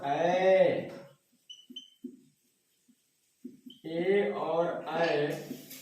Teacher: कंठ और तालु दोनों के संपर्क से होता है। कंठ और तालु दोनों के संपर्क से होता है, इसलिए इसको हम बोलते हैं कंठ तालव्य वर्ण।